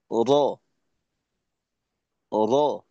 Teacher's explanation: তো এই হিসেবে আমরা বলতে পারি যে র এর মাখরাজটা হলো উপরে, আর লামের মাখরাজটা হলো নিচে। তো র যখন আমরা উচ্চারণ করব, র, তখন জিহ্বার আগাটা উপরের থেকে নিচের দিকে নামবে। র, র, নিচের দিকে ছেড়ে দেবো জিহ্বার আগাটাকে। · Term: ইনহেরাফ